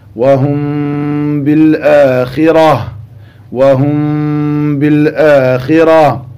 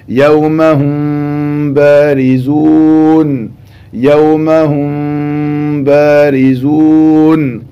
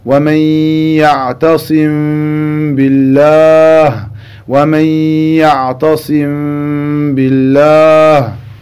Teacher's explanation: lorsque la lettre mim as-sakina rencontre la lettre ba, on pratiquera donc al-ikhfa al-shafawi